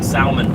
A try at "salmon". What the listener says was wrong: It is not salmon. It is salmon. The L is silent. It is salmon.